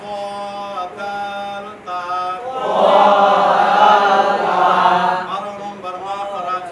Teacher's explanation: জিহ্বা এখানে লাগান ডান হাতের আঙ্গুল তুলেন বাম হাতের জিহ্বাটা লাগান জিহ্বার আগা সামনের উপরে দুই দাঁতের গোড়ার সঙ্গে লাগাইয়া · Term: 11 নম্বর মাখরাজ